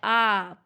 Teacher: विवृत स्वर है जिन स्वरों के उच्चारण में मुख द्वार पूरा खुलता है, आ पूरा खुल रहा है तो वो विवृत, जिसमें आधा खुले वो अर्ध विवृत।